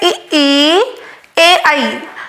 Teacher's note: अब आप उच्चारण करके ये देखिए ऐसा कौन सा स्वर है जिसके बोलने में हवा या फिर हम कहेंगे कि जब हम बोल रहे होते हैं तो जीभ के आगे वाले हिस्से से ही वो स्वर उच्चारित किए जा सकते हैं, पीछे तक जोर लगाने की जरूरत नहीं होती है। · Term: अग्र